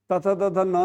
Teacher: तथ, द ध न जो है ना ये दंत से उच्चारण होता है